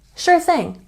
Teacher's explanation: make sure that you're really putting your tongue between your teeth because we have the TH in thing.